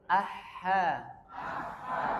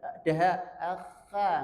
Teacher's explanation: dia harus rikhwah suara dan nafasnya mengalir